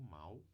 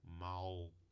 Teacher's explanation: o adjetivo é pronunciado com ditongo, mal, e o advérbio é pronunciado com uma consoante aqui, lateral no final.